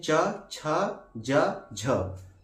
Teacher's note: उच्चारण करते समय मुखं का तो प्रयोग होता ही होता है इसमें जो हवा होती है वह हम मुख से बाहर निकलने के लिए थोड़ा सा संघर्ष करती है इनकी संख्या चार होता है जिनको हम लोग कहते हैं च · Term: स्पर्श संघर्षी व्यंजन